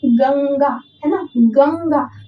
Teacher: ग के बाद न आपके वाणी में आता है। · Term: अनुस्वार